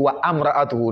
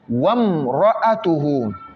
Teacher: on saute carrément, on avale carrément le A ou bien le I. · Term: Hamzatul Wasli